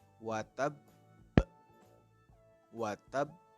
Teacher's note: jadi ditekan terlebih dahulu lalu ditahan dua harokat baru setelah itu dipantulkan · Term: Qalqalah Akbar